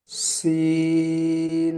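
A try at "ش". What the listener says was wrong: সিন নয়, শিন, একটু মোটা আওয়াজে বলেন, শিন।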